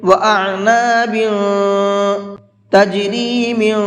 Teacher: تنوین کے بعد میں اخفا کے حرفوں میں سے کوئی بھی حرف آتا ہے تو وہاں اخفا کر کے پڑھتے ہیں، آواز کو تھوڑی دیر ناک میں چھپا کر کے پڑھتے ہیں